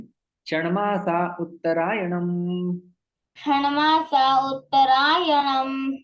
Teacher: विसर्ग का लोप हो जाता है क्योंकि आगे स्वर आया हुआ है